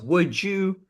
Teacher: d and y smash crash into each other becoming a j